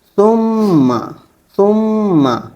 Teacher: جب ہم میم کو پڑھیں گے تو آواز ہمارے ناک میں رہے گی تھوڑی دیر تک کے لیے اور اس میں غنہ پیدا ہوگا، نا جیسے آواز آئے گی، ناک سے آواز آئے گی۔